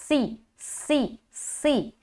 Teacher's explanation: सी सीटी की आवाज़ झलकनी चाहिए